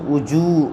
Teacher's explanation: وجوہ یومئذ خاشعہ، واو پیش وہ، جیم واو پہ جو، وجوہ واو ساکن سے پہلے پیش ہے، واو مدہ تھوڑا کھینچ کر پڑھیں